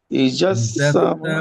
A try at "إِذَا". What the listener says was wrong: ইদা, দাটা কি ক্লিয়ার রাখে, যা হয়ে না যায়। রা, ইদা إذا السماء انفطرت